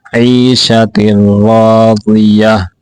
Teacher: یہاں عین کو کھینچ کے پڑھیں گے فہو فی عیشۃ راضیہ را کو بھی موٹا کر کے پڑھیں گے واد کو بھی موٹا کریں گے